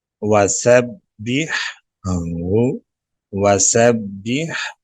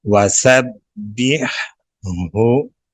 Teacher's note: پہلے ہا کو اس کے مخرج سے ادا کریں گے گلے کے درمیان سے۔ پھر اگلی ہا کو گلے کے نیچے والے حصے سے ادا کرتے ہوئے پڑھیں گے